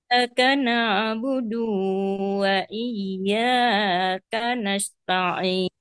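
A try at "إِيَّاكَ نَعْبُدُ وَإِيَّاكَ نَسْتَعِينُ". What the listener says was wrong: Nah, du-nya dipendekin saja. Iyyaka na'budu wa iyyaka nasta'in. Masih panjang. Dua. Na'budu wa gitu aja.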